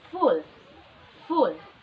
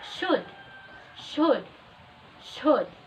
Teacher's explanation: short oo sound is produced more relaxed than the long oo sound. It is also less rounded and less protruded.